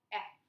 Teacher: I'm resting my teeth right on top of my lip.